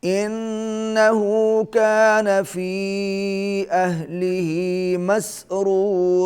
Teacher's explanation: انہو نون کے اوپر تشدید ہے، غنہ ہوگا، کان فی چھوٹی مد ہے کھینچ کے پڑھیں گے اہلہ مسرورا را پہلا را بھی پر ہوگا دوسرا را بھی پر ہوگا